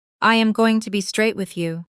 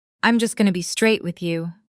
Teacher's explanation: Notice going to becomes gonna, a very common reduction in spoken American English.